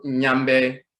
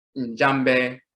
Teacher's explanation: They pronounce the ya as a ja